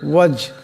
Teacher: ফাকুল আসলামতু ওয়াজহিয়া, এখানে জিম সাকিন, জিম কলকলার হরফ, আওয়াজটি টক্কর খাবে, ওয়াজ এমন হবে।